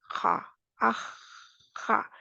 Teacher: जब हमारा मखरज वहाँ पे जाता है, एक दूसरे से लगता है, आह, आह, जहाँ पे एक दूसरे की तरफ बढ़ा, फिर खा, आह, खा, जब आह कहा तब भी बाहर हवा आई, और खा में भी बाहर आई।